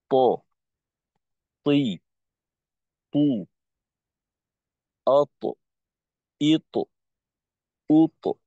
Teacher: ত উচ্চারণ করার সময় জিহ্বার আগা সামনের উপরের 2 দাঁতের গোড়াকে হালকা স্পর্শ করে, হালকা, একেবারে গোড়ার উপরের দিকটা ব্যবহার করা হয়।